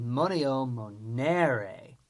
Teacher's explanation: the second conjugation has a long and strong E